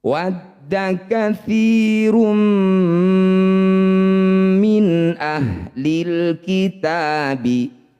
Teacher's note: Disebut bacaan izhar halqi. Bunyi nun baca jelas, tidak usah dengung. · Disebut bacaan idgham bi gunnah. Bunyi dhammah tanwinnya masukkan pada huruf mim, kemudian dengungkan 2 harokat.